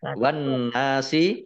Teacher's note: Wan nasi, alif lamnya alif lam samsiyah, karena tidak dibaca masuk ke huruf berikutnya yaitu nun, ditandai dengan nun tasdid. Nah, nun tasdid dibaca gunnah atau mendengung, ditahan 2 harokat. Kemudian nun fathah alif mat tobi'i, panjang 2 harokat.